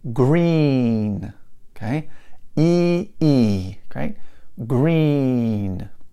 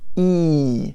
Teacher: my tongue is all the way up at the top very kind of tense and hard pushing up to the top sound e okay there's a little tiny hole or passageway right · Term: e sound